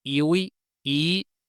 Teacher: se va a perder la v, es decir, la wow, el sonido w, y luego dos vocales iguales en contacto y i se van a contraer en una sola i, ¿vale?